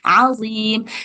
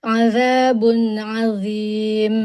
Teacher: Dia tuh satu makhraj dengan zal. Jadi harus keluar lidahnya.